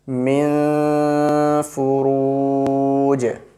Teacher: So we will do ikhfa sound on this noon. We will hide the voice into our nose for about 2 seconds.